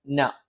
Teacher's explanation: ന നാവിന്റെ അറ്റം മേലെ മുൻപല്ലിന്റെ മോണയിലാണ്.